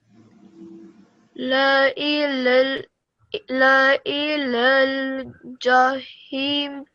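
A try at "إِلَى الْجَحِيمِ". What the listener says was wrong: Prolong it a little bit more because it's ya madda. La ilal jahimi. Jahimi.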